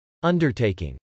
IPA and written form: ˈʌndɚt.eɪkɪŋ (undertaking)